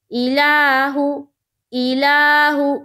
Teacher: پیش کو جلدی پڑھیں، تھوڑا بھی نہ کھینچیں، معروف پڑھیں، مجہول آواز سے بچیں